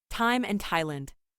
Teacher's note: There are some words where the T-H is not pronounced, in other words, the T-H is just pronounced as T.